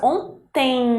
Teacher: esse M ele tenha o som de I ou U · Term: ditongo decrescente nasal